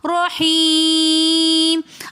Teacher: رحیم میں یا مدہ کے بعد یہ ساکن حرف آ رہا ہے، میم ساکن، تو اس وجہ سے ہم نے اس کو لاسٹ میں تھوڑا سا زیادہ کھینچ کر پڑھا